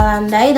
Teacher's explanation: Sebagai contoh, bunyi I pada kata landai dalam bahasa Indonesia memiliki kekuatan bunyi pada unsur pertama yaitu bunyi A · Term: diftong turun